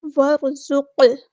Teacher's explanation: ज़ा बारीक, वरज़ुक़, ज़ा को सख्ती से अदा करना है, क़ाफ साकिन पे कलकला होगा